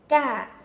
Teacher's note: It's more of that stopping the air in the back of your throat, that very, the K without the air, the g sound